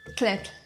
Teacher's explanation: It's like if you try to pronounce T and L at the same time